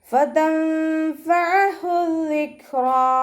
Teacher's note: ഫ ലൈറ്റ് ആക്കുക. മേലെ മുൻപല്ലിൻ്റെ അറ്റം താഴെ ചുണ്ടിൻ്റെ ഉൾവശത്ത് നനഞ്ഞ ഭാഗത്ത് വെച്ചിട്ട് ഉച്ചരിക്കുക